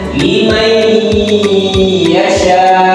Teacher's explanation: suara nun sukun atau tanwin, ya, dilebur masuk ke dalam huruf sesudahnya dengan didengungkan dan ditahan selama 2 atau sebanyak 2 harokat hingga suaranya non atau tanwin itu hilang. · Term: idgham biguna